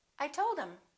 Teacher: instead of saying I told him we just dropped the H